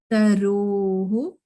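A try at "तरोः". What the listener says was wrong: It's still sounding like taruhu. Taroho.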